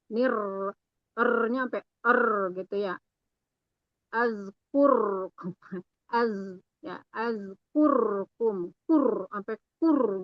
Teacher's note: Mad sesuaikan juga, yang 2 harokat ya kita baca 2 harokat, yang 4 harokat baca 4 harokat, yang boleh 2, 4 itu diikutin boleh, asal konsisten. Terus terlalu menggetarkan huruf ro, jadi bergetar banget